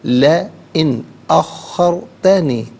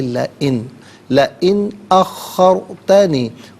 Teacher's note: لئن اخرتنی، ناظرین ان میں نون ساکن ہے، اس کے بعد حرف علقی حمزہ آ رہا ہے تو نون ساکن کو یہاں پر اظہار کے ساتھ پڑھا جائے گا، اخفا یا غنہ نہیں کیا جائے گا. لا علیحدہ، ان علیحدہ ملا کر پڑھیں گے لئن.